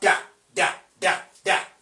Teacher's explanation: That is voiced alveolar plosive.